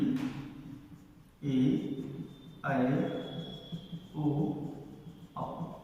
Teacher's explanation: ऐसे स्वर जिनका उच्चारण करते समय हवा सिर्फ मुख द्वार से ही बाहर निकलती हो, निर्नुनासिक कहलाते हैं या मौखिक स्वर कहलाते हैं।